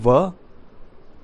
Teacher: दांत और ओष्ठ की सहायता से जो बोला जाता है वो वर्ण है व